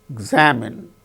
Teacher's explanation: in the case of the word examine second syllable gain stress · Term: word stress